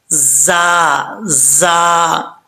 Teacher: یہاں پر زا جو ہے حروف صفیریہ میں سے ہے، اس کو سیٹی کے ساتھ پڑھا جائے گا